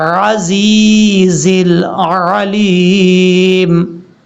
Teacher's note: عزیز میں جو عین ہے اس کو آپ نے کلیئر کرنا ہے، حمزہ کی آواز نہیں آنی چاہیے